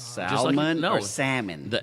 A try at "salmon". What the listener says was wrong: The L is silent. The salmon.